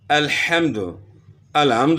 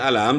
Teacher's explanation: ہا تو گلے کے آخر سے ادا ہوتی ہے